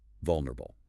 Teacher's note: The primary stress is on the first syllable, V-U-L. The subsequent syllables are softer, quicker, and less stressed.